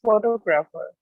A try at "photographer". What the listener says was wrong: No, it's a photographer. Photographer. Wait, it's a photographer. Wait, it's a, don't say fo. It's a fa. Photographer.